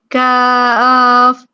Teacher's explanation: پھر ہم نے کاف دیکھا، کاف کو باریک پڑا جاتا ہے یعنی کاف. زبان کی جڑ جب نرم تالو سے ذرا آگے سخت تالو کے ساتھ لگتی ہے تو کاف ادا ہوتا ہے